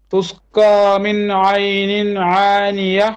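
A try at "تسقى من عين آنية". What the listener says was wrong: عين آنية. عين and then Hamza, not عين. عين Hamza آنية.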